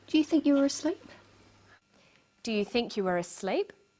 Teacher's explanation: Her voice goes up at the end of the sentence. We call this a rising tone. The rising tone is used for yes-no questions, questions that need a yes or a no answer.